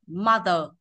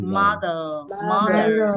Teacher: nó chỉ đọc đến chữ ơ này thôi ạ mother hết Nhưng anh mỹ thì nó kéo dài đuôi chữ ờ ờ ra một tí ạ